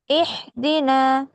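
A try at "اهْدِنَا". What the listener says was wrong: না, হায়ের মাখরাজ হয় নাই। এই হায়ের মতো হয়ে গেছে, এটা হচ্ছে হায়া হদ্দি, এটা কণ্ঠের মাঝখান থেকে আসে। আর এটা হচ্ছে হায়া হাওয়াজ, ছোট হা, হলকে শুরু হইতে কেমন? এহ দিনা, এহ দিনা।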